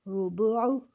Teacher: وا پیش رو، با پیش بو، عین پیش او، ربوع۔ اب عین جو ہے حروف ہلکی ہے، اس کو حلق سے نکالنا ہے، وا کو ہم نے موٹا کرنا ہے، وا پیش رو، با پیش بو، عین پیش او، ربوع۔